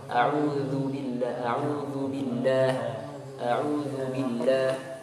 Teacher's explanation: Kemudian kesalahan berikutnya adalah, kelihatan ini udara berhembus pada huruf zal. A'udzu ya, jangan sampai ada udara yang berhembus.